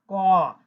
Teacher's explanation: কর সাথে আমরা যখন কটা বলি তখন কিন্তু কর সাথে অ উচ্চারণ চলে আসে শেষে, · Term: ব্যঞ্জন ধ্বনি